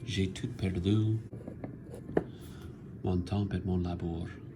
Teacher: You can hear that pause after the perdu, after the fourth syllable. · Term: caesura